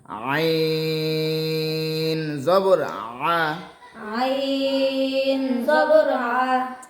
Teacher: আইন উচ্চারণের সময় একটু গলা চেপে উচ্চারণ করতে হবে।